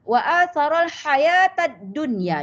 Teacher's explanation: Nun mati bertemu ya di dalam satu kalimah, makanya tidak boleh berdengung. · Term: izhar mutlak